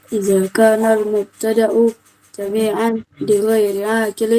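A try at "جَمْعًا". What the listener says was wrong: Jam'an ya. Jam'an, bukan jami'an tapi jam'an. Jam'an.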